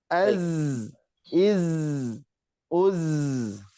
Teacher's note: Meskipun nafas tertahan, tapi dia punya sofir, punya desis.